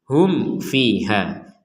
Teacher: Kemudian di sini ada mim sukun bertemu fa, kita bacanya dengan jelas. Sekali lagi dibaca dengan jelas ini artinya tidak ada dengung atau samar sama sekali. Hum fiha. Yang dimaksud jelas ini juga tidak ada pantulan.